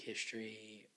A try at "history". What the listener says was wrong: History, not history. 3 syllables, not 2.